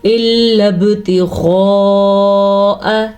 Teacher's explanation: غین کو پر پڑھیں گے، ہونٹوں کو گول کریں، منہ کو گول کریں تو غین خود بخود موٹا ہو جائے گا.